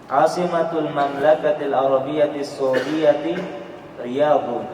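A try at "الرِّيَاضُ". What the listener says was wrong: Pakai alif lam. Asimatul Mamlakatil Arabiyyati Saudiyati Ar-Riyadh.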